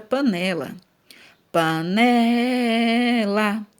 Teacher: percebemos aqui ó que o né é a sílaba mais forte ou seja o né é a sílaba tônica